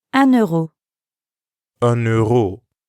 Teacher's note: listen to the liaison between un and euro